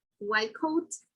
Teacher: the T sound will become a K